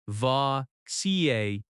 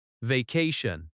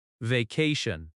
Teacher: Vacation has stress on the second syllable.